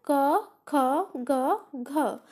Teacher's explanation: कंठ से कौन से वर्ग का उच्चारण होगा क वर्ग का